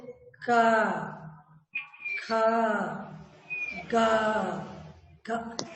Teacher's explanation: कंठ का वर्ग के जो भी अक्षर है 5, इसको जब हम पढ़ते हैं तो जीभ हमारे कंठ को स्पर्श करती है।